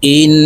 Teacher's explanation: হামজাহ নুন জের ইন, ওয়াজিব গুন্না হরকতের বামে, নুনের উপরে তাসদিদ আছে, তাই এই হামজা নুনের সাথে গুন্নার সহিত পড়ব